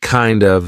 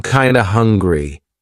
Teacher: we're turning that of into a schwa. So it's not kind of, it's kinda.